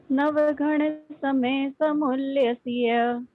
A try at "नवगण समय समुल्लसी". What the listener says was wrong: क्षमा चाहते हैं, य तक नहीं, उच्चारण की दृष्टि से को सी तक ही पढ़ना है। नवगण समय समुल्लसी,